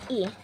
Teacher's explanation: posisi mulut itu semi tertutup, hampir tertutup. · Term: vokal I